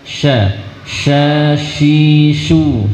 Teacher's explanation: huruf sin punya sifat tafasyi, dia sebarkan udara dengan deras.